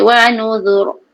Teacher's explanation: nuzur zal nipis dan ra tu tebal